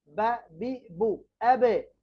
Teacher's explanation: বা দুই ঠোঁটের ভিজা অংশ থেকে